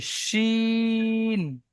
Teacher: শিনটি উচ্চারণ হয় জিভের মাঝখান এবং ওই সোজা উপরের তালুর সঙ্গে লাগিয়ে শিন উচ্চারিত হয়। শিন, একটু মোটা আওয়াজে।